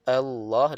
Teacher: ramai baca Allah a jadi a tebal sedangkan sifatnya nipis sepatutnya Allahu kan biasa sikit bunyi tu Allah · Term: a tu nipis